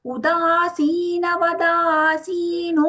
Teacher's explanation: The sa there in both the places is the dental sa. Udasina vadasino, no long.